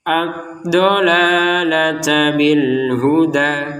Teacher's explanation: Huda kita panjangkan dua harakat.